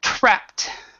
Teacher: you have the P and the T that has actually a really strong aspiration